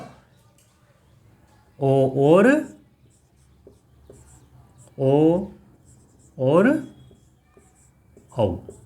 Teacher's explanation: इन दोनों का उच्चारण स्थान कहाँ से होता है, कंठ ओष्ठ से। ठीक है, कंठ और ओष्ठ से। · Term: कंठोष्ठ